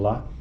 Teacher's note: durante a produção da vogal a a úvula Deverá estar levantada Portanto o ar não terá acesso à cavidade nasal e não haverá ressonância nessa cavidade